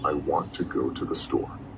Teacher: Now the stressed words are want, go, and store. Those are the important words, the words you really need to hear.